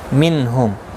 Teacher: नून साकिन के बाद हा आया है, इजहार हल्की होगा, गुन्ना नहीं करेंगे